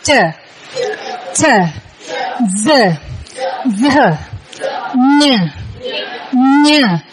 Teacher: Khi âm vòm họng đọc á, cái phần lưỡi, phần giữa của cái lưỡi mình bước lên gặp cái phần nắp họng phía giữa đó.